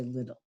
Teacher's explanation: glottal stop that means you're stopping the sound or the air in the middle of a word and it's usually a word with t in the middle or